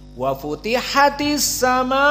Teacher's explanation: Pertama, as-sama, maka di sini dalam keadaan mad wajib muttasil, dia dalam keadaan al-isba', dibaca panjang